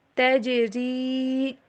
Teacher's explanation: جیم کے اوپر کلکلا، تج اور را کو باریک